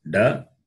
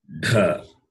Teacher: This is da, alpa prana, non-aspirate, and mahaprana is dha.